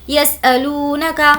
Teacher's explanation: واو مدہ ہے کھینچیں گے